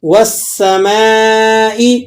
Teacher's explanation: تو آپ نے سین کو باریک سیٹی کے ساتھ ادا کرنا ہے، اور میم پر، میم الف زبر ما، اس پر مد بھی لگا ہوا ہے، تو آپ نے اس مد کو تقریباً 4 الف تک کھینچ کر ادا کرنا ہے. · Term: مد متصل